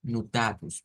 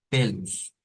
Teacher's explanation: hay muchas o al final verdad que se convierten en U